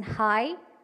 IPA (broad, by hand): hai